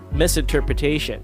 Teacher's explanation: it's like you're connecting the sh sound of the tio right directly to the n sound at the end of the word